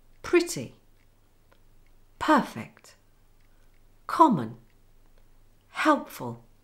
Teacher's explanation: Can you hear how the main stress on the first syllable is stronger?